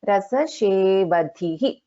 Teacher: Dha is a Mahaprana and again we have a Visarga in the end.